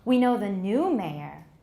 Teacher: We know the new mayor implies what? We don't know the old one. We only know the new one. So we're contrasting. That's contrastive stress.